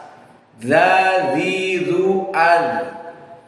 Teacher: Zadzidu al, undur ujung lisan, atraful lisan bertemu dengan ujung as-sanaya al-ulya, ujung dari gusi yang akan bertemu dengan gigi seri yang paling atas. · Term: makhraj zal